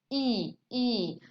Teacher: E is front, remember, front, and close approximation, E, E. Our tongue here, E, is very close to the palate, okay?